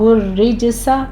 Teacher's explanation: را کو آپ نے باریک پڑھنا ہے، را مرقق ہے، تشدید والی کسرہ والی ہے، جیم کے اوپر قلقلہ ہوگا۔